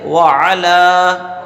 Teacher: لام پر کھڑا زبر ہے تو اسے ایک الف کے برابر کھینچ کے پڑھنا ہے